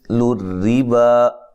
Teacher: مثل الربا را کو باریک پڑھیں گے اور یہ مد اصلی ہے